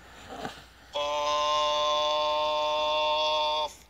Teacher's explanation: কফ হরফটি জিহ্বার গোড়া তার বরাবর উপরের তালুতে লাগাইয়া শক্ত করে বলতে হয়